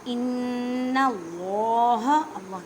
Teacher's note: اللہ کے لفظ کو پر پڑھیں, لوٹا پڑھیں کیونکہ اللہ کے لفظ سے پہلے زبر ہے. نون مشدد گنہ کریں.